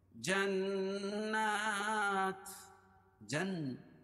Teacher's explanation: نون مشدد ہے، نون مشدد اور میم مشدد میں غنہ ہوتا ہے، کھڑا زبر قائم مقام الف مدہ کی اس کو ایک الف کے برابر کھینچ کے پڑھیں گے.